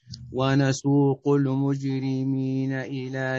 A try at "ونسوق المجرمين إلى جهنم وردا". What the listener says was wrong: لا لا لا لا لا تقلقل الميم ونسوق النون المشددة إلى جهنم وردا